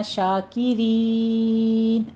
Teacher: شاکر نہیں کہنا، شاکرین آخر پہ مد عارض وقفی کر لیں گے، 6 کاؤنٹ کرنا ہے